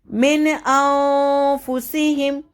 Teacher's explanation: इख्फा का मतलब होता है छुपाना, तो यहाँ पे हमने नून की आवाज़ को अपनी नाक में छुपाएंगे